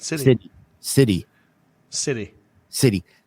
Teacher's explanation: Michigan people don't say the T.